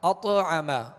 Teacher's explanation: آواز لوٹتی آئے گی، آواز میں جنبش پیدا ہوگی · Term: قلقلہ